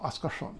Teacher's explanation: the r goes retroflex when it gets to the S and the S assimilates